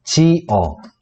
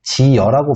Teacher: 원래는 어로만 발음돼야 되는데 그 앞에 반모음 이가 더해졌기 때문에 여로 발음이 되는 거다. 이렇게 보시면 되고 이 반모음 이는 앞글자 이 모음의 영향으로 첨가가 되는 거예요.